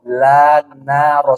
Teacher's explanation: Jadi ada 3 huruf. La, na, sama ro. Di ujung lidah bertemu dengan gusi.